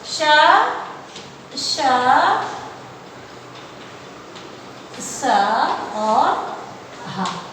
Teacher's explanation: इनको बोलते समय मुंह में रगड़ होने से ऊष्मा उत्पन्न होती है, इसलिए कहते हैं ऊष्म। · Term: ऊष्म व्यंजन